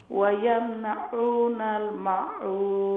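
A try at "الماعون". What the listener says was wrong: ميم لمبا ماعون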